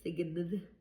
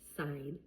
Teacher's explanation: It's right before the N. So, we don't make a sound for the G. You only hear the N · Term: silent G